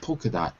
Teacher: Oh, so you omit the L. Yeah, you don't really say the L.